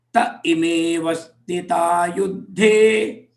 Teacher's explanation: when you club together te becomes ta and ime avastita gets clubbed together